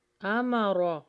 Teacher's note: را کو موٹا پڑھیے اور جلدی پڑھیں گے